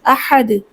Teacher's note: اور آخر پہ کلکلا ہوگا